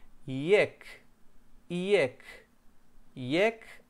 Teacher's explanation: no es jack jack jack no es así es como una y alargada como que dijéramos hielo en castellano hielo hielo es como una